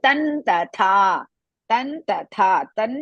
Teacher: to remove the ಮಕರ next letter is ತ ಸೋ ತಥ fifth letter of ತ ವರ್ಗ ಇಸ್ ನ